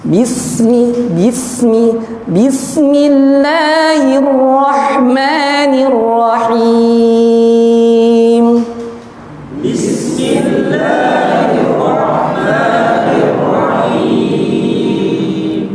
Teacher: baca bismillah, sinnya, rokhwahnya diperhatikan. Sering orang baca dengan cara syiddah, tertahan atau bubulainiyah.